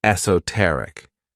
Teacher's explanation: this word has four syllables and the stress is on that third syllable